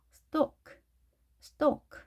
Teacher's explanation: L이 묵음이 된다는 거